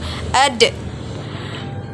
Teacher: lidah kita ke Gusti bagian atas sebagaimana kita melafalkan huruf ta dalam keadaan mati huruf da terdengar suaranya memantul